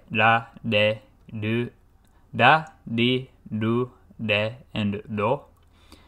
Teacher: you just quickly touch your tongue to the roof of your mouth specifically the hard palate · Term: flap consonant